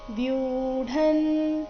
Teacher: ಇಲ್ಲಿ ವ್ಯೂ ದೀರ್ಘ, ಮುಂದೆ ಢ ಬರಬೇಕು.